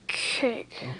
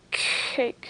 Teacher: Your tongue goes back for the K sound.